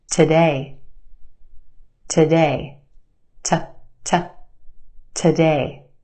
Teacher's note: our second syllable has the stressed or emphasized vowel sound a a we stretch that sound and put it in the spotlight the first syllable is where we have our schwa sound today